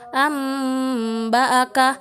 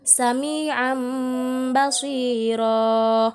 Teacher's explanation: jika terdapat nun sukun atau tanwin bertemu dengan huruf ba, maka dibaca secara tertukar atau dibalik menjadi mim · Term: iqlab